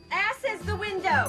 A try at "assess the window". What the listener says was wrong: It's assess the window, not ass is the window. You put the wrong emphasis on the wrong syllable.